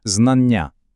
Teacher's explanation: Ну, наприклад, у слові знання ми бачимо дві літери не, але ж не кажемо знання. Ми вимовляємо один, але довгий протяжний звук Н.